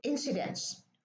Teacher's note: the T is deleted